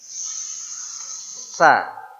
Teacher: ujung lidah menjumpai ujung gigi seri atas gigi seri atas itu dua gigi yang tengah ya kemudian bergetar · huruf sa ini adalah huruf s yang mengucapkannya lidahnya naik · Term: huruf tsa